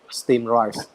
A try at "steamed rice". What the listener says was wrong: There's an M. There's an M. You gotta say steam. Steamed rice.